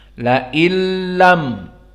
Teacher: nunnya tidak dibaca, itulah hakikat dari idgham